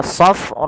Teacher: Panjangkan huruf ra sepanjang 4 harokat karena di sini ada bacaan yang kita namakan dengan mad wajib muttasil. Mad wajib muttasil yaitu mad yang terjadi akibat adanya huruf hamzah yang datang setelah huruf mad.